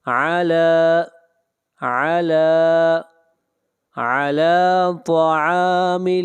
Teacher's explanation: طا کو موٹا پڑھیں گے، طا حروف مستعلیہ میں سے ہے،